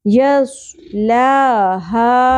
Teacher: لام کھڑی زبر لا یس لا ہا یہاں پر بھی مد اصلی تھی لیکن اوپر چھوٹی مد منفصل کیوں نظر آ رہی ہے آگے سبب مدہ حمزہ اگلے لفظ کے شروع میں آ گیا ٹھیک ہے. ہا تین الف کے برابر کھینچنا ہے